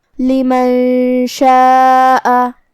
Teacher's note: مد واجب متصل کا معنی ہے کہ حرف المد اور اس کی وجہ جو کہ حمزہ ہے دونوں ایک ہی کلمہ میں ہو. مد واجب متصل میں ہم اپنی آواز 4 مد کے برابر لمبی کریں گے